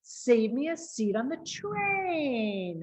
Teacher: Now we're going to get the flap on seat and we're going to go all the way to train.